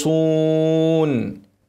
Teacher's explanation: خاء ساكنه مفخمه اسكن الفم لكن مع التفخيم